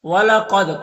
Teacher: وَإِنَّهُمَا لَبِإِمَامٍ مُبِينٍ وَلَقَدْ قاف حروف مستعلیہ میں سے پر پڑھیں گے، دال میں قلقلہ ہوگا کیونکہ دال میں حروف قلقلہ میں سے ہے اور دال کے اوپر جزم ہے، تو اس کو ادا کرتے وقت دال کی آواز اپنے مخرج سے ٹکر کھا کر الگ ہو جائے گی